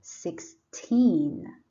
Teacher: this word has teen on the second syllable so you put a stress on the second syllable